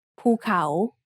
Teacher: The second syllable has the initial consonant ขอไข่ with the vowel สระเอา The first syllable is mid-tone and the second syllable has a rising tone